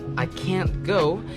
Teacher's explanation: I can't go has a tension to it and a down tone too.